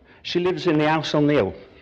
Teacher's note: you might also notice that I dropped my H's